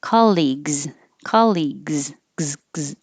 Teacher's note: if it was plural, you would hear the gz